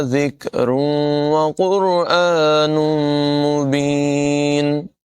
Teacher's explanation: ذال میں سیٹ کی آواز پیدا نہیں ہونے دیں گے اور را کو پر ادا کریں گے۔ تنوین کے بعد یہاں پر واو ہے، حروف یرمالون میں سے ادغام ہوگا، ملا کر پڑھیں گے اور غنہ کریں گے۔